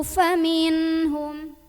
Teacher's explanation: Maka cara membunyikannya, nun sukunnya ini dibunyikan dengan jelas, bunyi an ya, dan tidak perlu kita tahan. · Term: idhar halqi